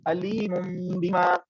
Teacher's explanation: نون تنوین کے بعد حرف با آیا تو ہم نے اس کو کس سے بدل دیا؟ ہم نے اس کو میم سے بدل دیا تو وہ ہمارے پاس بن گیا علیم.